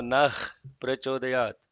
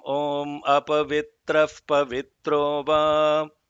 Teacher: The visarga before the pa has to be pronounced as fa.